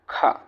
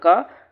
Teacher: ख का उच्चारण करेंगे तो आप पाएंगे कि क के अपेक्षा अधिक हवा निकलता है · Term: महाप्राण